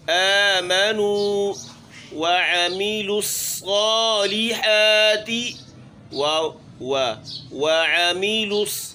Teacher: عین کی ادائیگی گلے کے درمیان سے، حلق کے درمیان سے عین ادا ہوگا۔